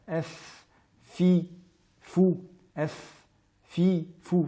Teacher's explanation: nous utilisons ici l'extrémité des incisives supérieures en appui sur la lèvre inférieure, ou l'intérieur de la lèvre inférieure. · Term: lettre labiodontale